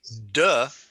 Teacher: when you say duh where is the tip of your tongue where's the tip of your tongue it's on the alveolar ridge